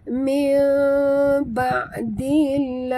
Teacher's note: Nun mati bertemu ba. Tukarkan bunyi nun mati kepada bunyi mim. Iqlab.